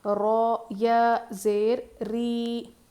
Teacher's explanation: لیکن قاعدہ یہ ہے کہ جب بھی را پر زبر یا پیش ہو تو را کو موٹا پڑھتے ہیں، اور زیر ہو تو را کو باریک پڑھتے ہیں. تو یہاں پہ ہم را کو باریک پڑھیں گے.